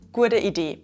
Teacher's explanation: Ihr seht also, dass U zu einem Diphthong und zwar Ur wird.